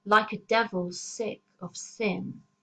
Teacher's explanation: a very oral sibilant technique where the S sounds actually make us hiss as we read the line, which is a terrifying effect, as though we are the devil incarnate.